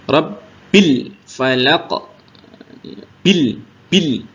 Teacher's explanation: Bil lam sukunnya ditekan jangan sampai memantul jangan sampai tertahan